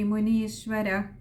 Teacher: വിസർഗമുണ്ട്, പകുതി ഹകാരത്തിൽ വായിച്ചു നിർത്തുക